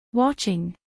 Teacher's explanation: watching dos sílabas watching acentuación en la primera sílaba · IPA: ˈwɑʧɪŋ